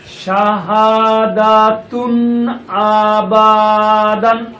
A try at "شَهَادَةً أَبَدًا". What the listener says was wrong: মাশাআল্লাহ, সঠিক